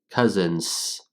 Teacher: the only vibration that you get is more of a carryover vibration from the N sound. Nz. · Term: NS sound